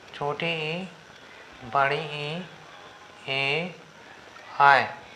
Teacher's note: जिन स्वरों के उच्चारण में जीभ के आगे की हिस्सा, जीभ के आगे का हिस्सा सहायक हो उन्हें हम अग्रस्वर कहते हैं